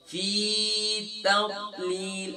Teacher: हम यहाँ फा के बाद या मतलब को खींचते नहीं है